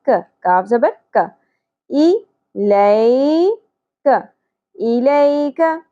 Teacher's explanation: ایک زبر کو ہم صرف آدھی الف کے برابر کھینچیں گے